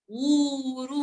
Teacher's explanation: ऊ दीर्घ आणि रू दीर्घ उरू नाही म्हणायचं ते ऊरू ऊ पण लांबा आणि रू पण लांबा